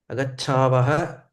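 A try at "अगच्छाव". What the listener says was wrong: Agachava. No visarga.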